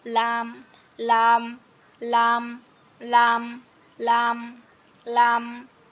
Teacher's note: এটা হচ্ছে আমাদের যে যে দাঁতের আগা আছে না, যে দাঁতের সামনের দাঁতের যে আগা থাকে, আগার সাথে জিহ্বার আগার কিনারাটা লাগবে শুধু।